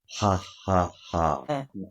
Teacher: like you're laughing, but without the vocal cords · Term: H sound